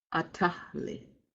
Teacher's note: this does not have the aspirated L sound. The H and the L are sounded separately.